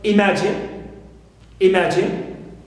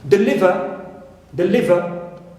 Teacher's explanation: So in case you have any three-syllable verb, right, and its third syllable contains only short vowel alone or short vowel plus consonant, so here I stress the second syllable. Second syllable, logically, as the three previous elements are absent here.